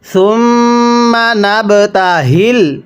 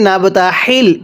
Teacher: এই গোল হাগুলো উচ্চারণ করার সময় গলার মধ্যে একটু আওয়াজ করে পড়বেন।